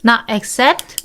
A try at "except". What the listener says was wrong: It's with the E. EX.